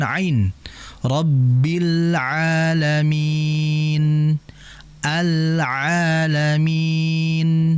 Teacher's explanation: huruf ain ini keluarnya atau makhrajnya, cara pengucapannya itu disebutkan min wasatil halqi